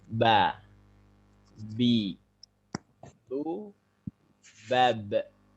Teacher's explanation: itu ba hurufnya di dua bibir ini. Tapi tidak perlu ditekan. Dan muncul ada tekanan ba.